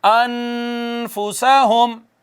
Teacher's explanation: ایک الف کے برابر آواز کو چھپائیں گے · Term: اخفا